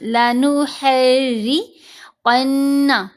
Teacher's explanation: قاف کو موٹا پڑھیں گے، نون پر غنہ ہوگا